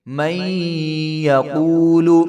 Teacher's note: میم کو یا کے ساتھ ملا دیں گے، آگے یا مشدد ہے اور نون جو ہے یہاں پہ سائلنٹ ہو جائے گی